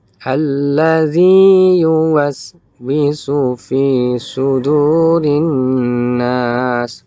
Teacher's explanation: Itu ada huruf ya bertemu dengan huruf ya, maka dia bukan diidghamkan melainkan zi-nya tetap dibaca mad.